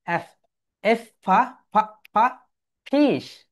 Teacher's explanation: আমাদের উপরের দাঁত নিচের ঠোঁটের সঙ্গে টাচ করবে।